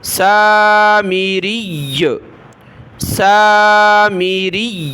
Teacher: پیش کے ساتھ ہے، جب وقف کریں گے تو سامیری، سامیری، یا پر تشدید پڑھی لیکن زبر زیر پیش کو نہیں پڑھنا، سکون پڑھنا ہے